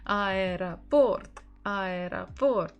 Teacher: so we stress Port